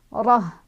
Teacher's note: Lepasin ro-nya 1 harokat saja karena di depannya tidak ada pemanjang ya, di depan ro-nya.